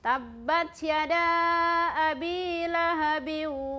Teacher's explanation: Ya. Jadi ketika kita mengucapkan huruf ba, tidak ada aliran nafas yang mengalir. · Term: huruf jahar, sifat huruf jahar